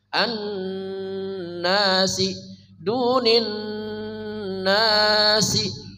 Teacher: Min duni, dunin nasi, an nasi, nunnya wajib dengung sempurna gunnahnya ya. Nun musyaddadah tajibul gunnah, nun bertasydid wajib dibaca dengung, atau alif lam syamsiyah ma'al gunnah.